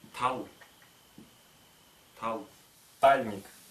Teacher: Она точно так же, как и П, включает в себя две фонемы. Т сильное с придыханием.